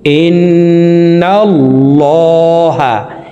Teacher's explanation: তো এই হামজা তাসদীদওয়ালা নুনের সাথে 3 সেকেন্ড পরিমাণ গুন্নাহ করে ধরে রেখে পড়ব · এই লামকে ল অর্থাৎ মোটা করিয়া পড়িতে হয় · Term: ওয়াজিব গুন্না